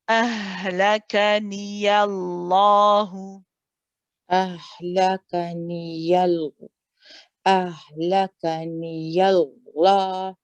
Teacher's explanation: So after the ya, after you pronounce the ya, shift to heavy lam mode.